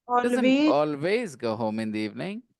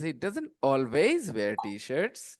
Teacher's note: I'm stressing the word always